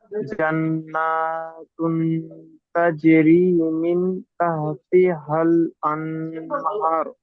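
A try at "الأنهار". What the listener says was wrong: হার টান হবে। হার।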